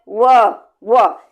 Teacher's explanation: ओठ जो है नीचे का जो ओठ है ये ऊपर के दांत को जाके छूता है। वो यानी कि जब हम उच्चारण करते हैं तो हमारा नीचे का जो दांत ओष्ठ है ये जाकर के ऊपर वाले दांत को छूता है और जीभ जो है ऊपर जाकर के ऊपर उठ जाती है बस। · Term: दंत्योष्ठ व्यंजन